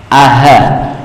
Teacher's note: Alif dan ha itu dari tenggorokan bagian bawah.